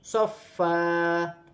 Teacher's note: اور یہاں فا پر بھی 2 زبر کی تنوین ہے، یہاں وقف کریں گے تو پھر وقف کی صورت میں 1 الف مدہ میں بدل جائے گی